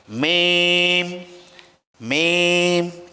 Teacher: মিম হল দুই ঠোটের শুকনা অংশ থেকে।